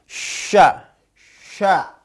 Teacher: caranya tengah lidah bertemu dengan langit-langit atas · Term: huruf syin